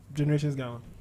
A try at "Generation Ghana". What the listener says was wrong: Okay, so we are Generation, not S. Generation Ghana.